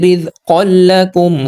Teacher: ادغام بلا غنہ کیا یعنی کہ بغیر غنہ کے ساتھ ہم نے ملایا ہے